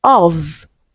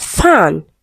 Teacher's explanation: So the sounds are similar only that one is voiced and the other is voiceless.